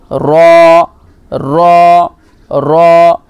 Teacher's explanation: জিভের আগার উল্টো পিঠ, এটা তার বরাবর উপরের তালুতে লাগিয়ে উচ্চারিত হয় র র র। এখানে উল্টো পিঠ বলতে এটাই বোঝাচ্ছে যে আপনার যে আগাটা তার একটু পেছনে, একেবারে আগা নয়, তার একটু পেছনে, হ্যাঁ, ওইটা সোজাসুজি উপরের তালুতে লেগে রটা বের হয়।